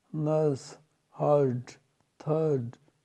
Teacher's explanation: ए की तरह उच्चारण करने वाला, नर्स, जिसमें आर साइलेंट है